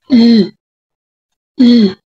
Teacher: Ang mga ponema ay ibinibigkas sa ibabaw ng dulong dila na dumidiit sa punong gilagid. Ang halimbawa nito ay ang ponemang katinig na L o L, L. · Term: panggilagid